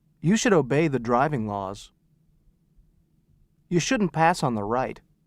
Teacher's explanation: note the use of the vowel sound uh in should and must when they are pronounced quickly